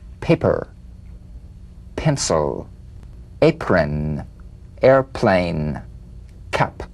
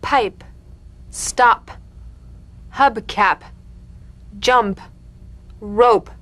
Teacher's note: The whispered tap of this drumbeat P is played with a light springing apart of the lips, just like for the B.